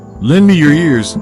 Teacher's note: This is a distinct tone group where Antony makes a direct request. The falling intonation on ears gives a sense of finality to the request.